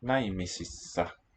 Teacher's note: Long S, two beats. So the consonants, there's a moraic difference too.